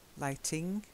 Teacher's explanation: Lighting, there's no n in the middle.